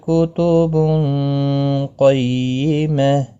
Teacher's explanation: یہاں پر تنوین کے بعد قاف آیا ہے اخفا کی ہوگا گنہ کے ساتھ پڑھیں گے قاف مستعلیہ ہے پر پڑھا جائے گا وقف بالابدال ہوگا گولتا